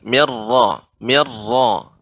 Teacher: RO di sini tidak banyak getaran